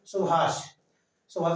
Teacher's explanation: कुछ शब्द ऐसे होते हैं जिनमें तीनों या एक सा से ज्यादा सा आते हैं, जैसे सुभाष। सुभाष में पहले छोटा सा, उसके बाद में आता है मूर्धा वाला सा।